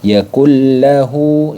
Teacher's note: ini dibaca idgham bila gunnah. Dileburkan saja tanpa harus didengungkan.